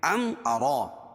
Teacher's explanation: میم ساکن کے بعد میم اور با کے علاوہ کوئی اور حرف آئے تو اظہار شفوی ہوتا ہے، اس کو ظاہر کر کے پڑھیں گے